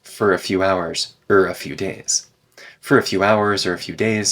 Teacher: for and or both get reduced to F